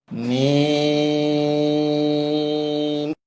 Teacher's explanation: এই হরফটি বলতে উভয় ঠোঁট মিলিয়া শুরু হবে, উভয় ঠোঁট মিলিয়া শেষ হবে। 4 আলিফ পরিমাণ লম্বা হবে, ওই সময়টা মুখ খুলে থাকবে।